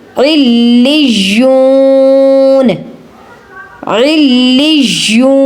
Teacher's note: لام کو یا کے ساتھ پہلی بار میں ہی آپ نے سختی سے ادا کرنا ہے اور یا کو پہلی بار میں ہی آپ نے ظاہر کرنا ہے، لی نہیں کہنا، لج کہنا ہے.